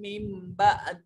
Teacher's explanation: بھی دیکھیے نون ساکن ہے اور اس کے بعد با، تو جہاں نون ساکن ہے اور اس کے بعد با ہو تو چھوٹی میم درمیان میں پڑھی جاتی ہے ، اس نون کو نہیں پڑھتے میم کو پڑھتے ہیں، اس